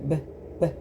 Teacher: [Music] Your lips are completely touching all the way across. When you make the sound B, if it's just basically BB, they're just touching for a second.